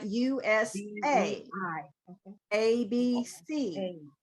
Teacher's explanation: you're going to go up in the pitch on the third acronym